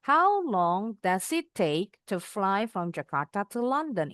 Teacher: Intonasinya turun. Makanya dari how-nya tinggi.